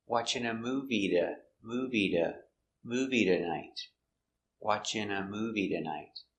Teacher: because the T is between two vowels, you can change it to a D sound.